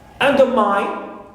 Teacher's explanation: So mine also is third syllable and it contains the diphthong I. That's why it is stressed.